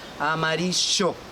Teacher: the Spanish from Argentina the Double L sounds like a sh